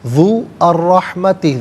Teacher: ذال پر پیش ہے، اس سے الرحمتی کے را کے ساتھ ملائیں گے، درمیان میں سے الف یعنی حمزہ کو حذف کیا جائے گا۔